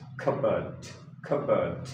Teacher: Remember first rule that P is silent here. We we shouldn't say P cup c and bird.